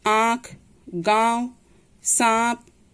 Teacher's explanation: अनुनासिक का उच्चारण नाक और गले दोनों की सहायता से किया जाता है और इसका प्रयोग चंद्र बिंदु के रूप में किया जाता है।